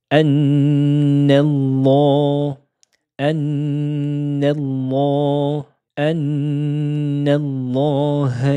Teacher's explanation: la lettre lem est prononcée de façon grave